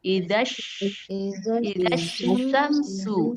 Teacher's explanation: yang shinnya itu lidah bagian tengah pada posisi langit-langit bagian atas. Jadi lidah bagian tengahnya ada di atas.